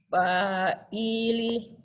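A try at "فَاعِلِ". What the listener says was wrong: Pa-nya doang yang panjang.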